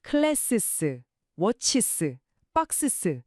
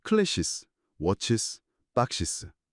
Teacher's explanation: 마찰음들 사이에 부드러운 모음 사운드를 하나 슬쩍 끼워 넣은 거죠